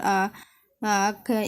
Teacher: এখানে বর্ণের উচ্চারণের আওয়াজ থেমে গেছে কণ্ঠনালীতে কাজেই বর্ণের মাখরাজ কণ্ঠনালী